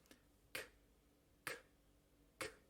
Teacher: Estos dos sonidos se producen en la parte de atrás de la boca, casi en la garganta. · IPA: [k]